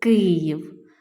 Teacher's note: два склади наголос падає на перший